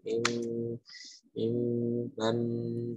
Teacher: jadi nun mati atau tanwin bertemu dengan huruf ba ya bunyinya diganti dengan bunyi mim ya mim seperti mim tasdid mim mim Ya ada dengungnya juga